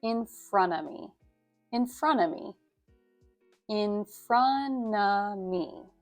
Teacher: And the final phrase, in front of me, instead of pronouncing each word in front of me individually, in rapid speech, we would squish these sounds together so that it's in front of me, in front of me, in front of me. So you kind of drop the T at the end of front, and you don't pronounce the V sound at the end of, but drop that as well.